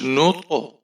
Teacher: طا موٹا حرف ہے اور اس کے اوپر ہم قلقلہ کریں گے